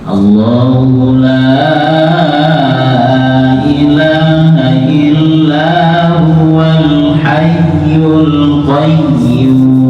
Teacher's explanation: Dua-duanya ditekan dan naik. Ada suara naik gitu. Jadi bukan sekedar ditekan.